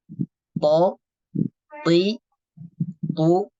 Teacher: pertemuan antara gigi seri atas dan busi untuk sifat yang pertama huruf th memiliki sifat jahr untuk tekanan suaranya dia syidah kuat